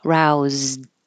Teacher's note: this Ed sounds like a d because the final sound before you added the Ed was voiced Z